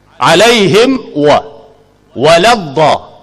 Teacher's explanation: Mim mati bertemu dengan waw, makhraj dia sama. Mim dan waw ni makhraj dia dua bibir mulut. Cuma bezanya mim dirapatkan bibir mulut, waw tidak dirapatkan. Oleh kerana dua huruf ni makhraj dia sama, izhar tu kena jaga bagi elok. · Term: izhar syafawi